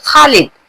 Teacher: ख की आवाज हलक के ऊपर से निकलती है।